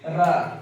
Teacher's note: र बोलने में हमारा जीभ का जो अगला भाग है तीन से चार बार क्या करती है? कंपन करती है। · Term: लुंठित व्यंजन